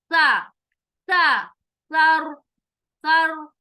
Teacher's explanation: زبان کی نوک سامنے والے دانتوں کے جو کنارے ٹکراتی ہے, یہ اس کا مخرج ہے